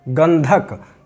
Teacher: अगला उदाहरण हमने धा का लिया है, और इस तरह से ये गंधक, धा का पंचम वर्ण भी ना है, इसलिए यहाँ पर धा की न की ध्वनि निकल रही है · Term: अनुस्वार